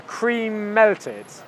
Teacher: can you see that my lips only come together for the M sound once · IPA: /kriːˈmel.tɪd/